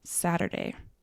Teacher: change the U to an E and then change the T to a D